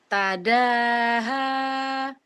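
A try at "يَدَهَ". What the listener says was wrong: Titiknya di bawah Ibu. Yada, yada.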